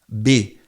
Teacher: Bilabial, o B, os dois lábios, o inferior, o superior, B, né? A bola, eles se encostam e sai o som, né?